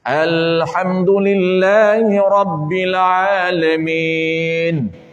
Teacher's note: Jangan lama lah, ini contoh saja saya lama ni sebab nak bagi nampak tu kena lam itu kena sukun, karakter dia kena melekat di lidah, di langit.